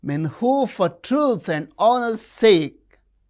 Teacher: men truth honor sake these are stressed